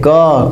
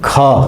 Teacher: पहली ध्वनि अल्प्राण है क, कम हवा। दूसरी ध्वनि महाप्राण है ख